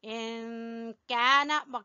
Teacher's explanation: यहाँ इख्फा हो रहा है, इन काना, काफ को बारीक पढ़ेंगे